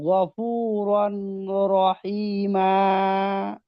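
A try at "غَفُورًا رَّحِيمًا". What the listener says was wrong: গফুরন নয়, এই তো ভুল হয়ে গেল। এই রটাকে রয়ে ধরবে তো, এখানে তো তানবিন হবে না। রর, গফুরর রহিমা।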